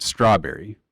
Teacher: strawberry for example you can hear how my voice stressed the first part and then two soft stresses on the second part